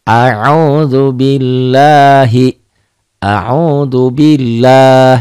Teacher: A'udzubillah. Jadi panjang kalau dihentikan ya. Jadi mad asli disukun.